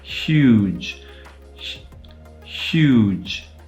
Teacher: when we say huge we're effectively saying huge but devoicing the first part of the word the first part of the word would otherwise be the palatal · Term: palatal fricative